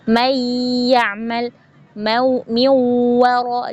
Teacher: banyak sekali menghilangkan sifat gunnah, jadi langsung dimasukkan ke huruf ya-nya